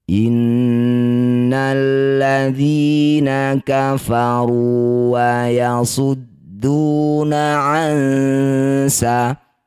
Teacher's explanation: Inna, nun bertasydid disebut bacaan namanya gunnah musyaddadah. Bunyi nun harus dengung dulu 2 harokat.